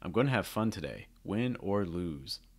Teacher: if you use this at the end of a sentence, then you'll have a falling intonation, a stronger falling intonation on lose.